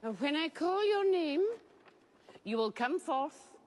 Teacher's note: mainly falling intonation because she is giving clear commands and showing authority, which helps the audience to understand that the statements are final and serious.